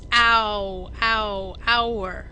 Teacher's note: the H is silent you don't hear it the first sound of hour is ow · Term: vowel sound